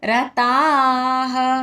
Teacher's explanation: రా హ్రస్వంగా పలకాలి. తా దీర్ఘంగా అండ్ తా తర్వాత విసర్గ ఉచ్చారణ హ రతాః. సన్నియమ్యేంద్రియగ్రామం సర్వత్ర సమబుద్ధయః తే ప్రాప్నువంతి మామేవ సర్వభూతహితే రతాః.